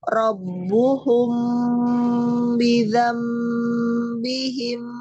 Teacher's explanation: ketika rbuhum mim sukun bertemu ba e ada ihfa safawi jadi ditahan